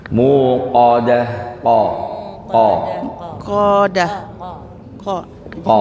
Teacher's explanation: Coba Ibu, ko-nya agak bersih dari angin.